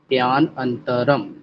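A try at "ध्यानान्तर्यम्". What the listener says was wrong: फिर अ बोले प्यानंतर्यम। पे, हाँ प्यान के बाद रुकिए मत। प्यानंतर्यम। अरे प्यान क्यों, प्यान के बाद अंतरम नहीं बोलना है। प्यानन प्यान प्यान प्यान प्यानन प्याननंत प्याननंतर।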